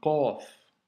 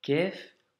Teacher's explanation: Pour une petite astuce liée à la prononciation, dis-toi que le son, comme je te le disais, doit remplir la bouche et la racine de ta langue, donc le fond de la langue finalement, doit monter et toucher le fond du palais quand tu la prononces